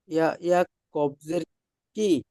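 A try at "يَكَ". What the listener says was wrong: ইয়া কবজের কি হবে, কেন জের আছে কি এখানে? না, দেখেন যদি কফের উপরে তাসদিদ থাকতো অথবা সাকিন থাকতো, তাহলে আমরা ইয়ার সঙ্গে মিলিয়ে পড়তাম, কিন্তু এখানে কফের উপরে সাকিন আছে বা তাসদিদ আছে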